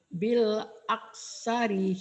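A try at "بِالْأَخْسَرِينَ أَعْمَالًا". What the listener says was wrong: Khoknya juga kalau mati dia jadi bunyi ka bil ak. Jangan bil ak tapi bil akh. Bil akh sarina a'mala. Bil akh. A'ma a'mala bil akh bil akh sarina a'mala.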